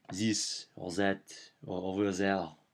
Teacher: French people have a lot of trouble pronouncing the TH sound. So it becomes Z